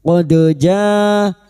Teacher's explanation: dal sukun yang mati asli di tengah kalimat qalqalah sugro. Qad ja, jangan lupa dipantulkan.